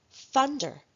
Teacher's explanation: practicing the voiceless th sound in the beginning of words in the initial position